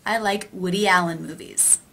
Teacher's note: the e vowel linking to the a vowel